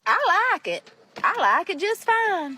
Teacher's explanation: the vowels are pronounced kind of long and sound like they're split into two syllables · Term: southern draw